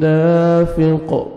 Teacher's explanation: آگے الف مد ہے, دال کو 1 سیکنڈ کھینچنا ہے, قاف کو سٹاپ کریں گے, قلقلہ کریں گے